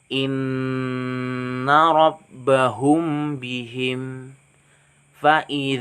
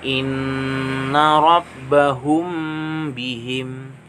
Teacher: cara membacanya itu samar-samar di bibir dan berdengung jadi dibaca samar-samar di bibir dan dibacanya dengung Inna rabbahum bihim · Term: Ikhfa Syafawi